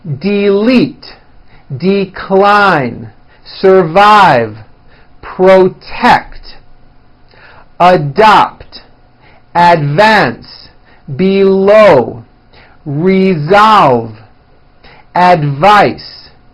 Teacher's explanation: here are a few two syllable words that are stressed on the second syllable